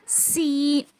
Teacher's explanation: तो इसका मखरज भी सेम जो है वो जा के जैसा है। क्या है, ज़ुबान की जो नोक होती है उसको नीचे के दो दांतों के जड़ में लगाने से सीन अदा होता है। जैसा कि पिक्चर में आप देख सकेंगे नाजरीन कि ज़ुबान की जो कोनी है वो कहाँ पे लगी हुई है, ग्रीन कलर का हाईलाइट किया गया है।